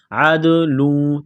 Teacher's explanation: دال ساکن ہے، حروف قلقلہ ہے تو دال پر قلقلہ کریں گے